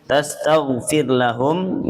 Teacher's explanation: rnya dibaca tipis kalau yang di sini karena ya sebelumnya adalah kasrah